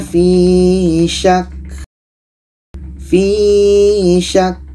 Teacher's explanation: ka ini sifatnya Hamas maka kita mesti dapatkan anginnya